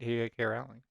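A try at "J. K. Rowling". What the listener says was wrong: You didn't say her name. You said Rowley.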